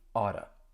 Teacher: you're going to hear me pronounce it as a flap T.